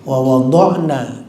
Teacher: Berarti di mad tobe'i. Alifnya itu mad tobe'i. Panjangnya 2 harakat.